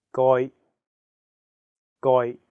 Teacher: you have to really stress the um sound hmm and then the second character is in a high flat tone first tone